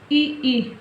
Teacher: तालव्य स्वर इ ई जो तालु से उच्चारित होते हैं